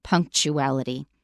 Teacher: note that it's spelled with a t u but we make a sound we pronounce it as CH